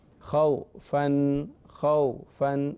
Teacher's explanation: واو ساکن ہو اس سے پہلے زبر ہو اسے واو لین کہتے ہیں، اور نرمی سے پڑھنا ہے